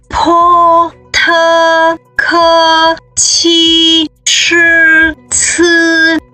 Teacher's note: suara aspiratif disebut sung qi yin, yang artinya cara pengucapannya disertai oleh dorongan udara dari dalam mulut